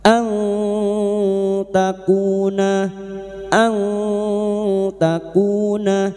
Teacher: nun sukun bertemu ta ikfa hakiki. Kita samarkan bunyi nun sukun dan mendengung selama tiga harakat. · kuna masing-masing dua harakat kita panjangkan · nun sukun bertemu ta ikfa hakiki, kita samarkan bunyi nun sukun dan mendengung selama 3 harakat. Ang takuna, ang takuna, kuna, masing-masing 2 harakat kita panjangkan mad tabi'i, duma diikuti wawu sukun, na fathah diikuti alif. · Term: mad th'i